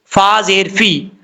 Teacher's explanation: ऊपर वाले दांतों का किनारा नीचे वाले होंठ की तरी वाली जगह पे लगेगा तो फा पढ़ा जाएगा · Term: फा का मखरज